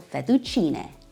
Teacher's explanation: the e at the end makes the eh sound, not e.